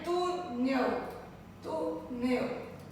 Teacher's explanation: De trás para frente, a penúltima sílaba com som mais forte. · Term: paroxítona